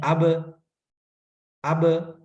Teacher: اس میں سانس جاری نہیں ہے بلکہ رٹن ہوئی ہے قلقلے کی وجہ سے